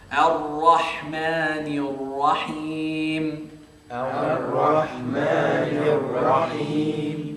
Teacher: ra comes from the tip of my tongue and the roof of my mouth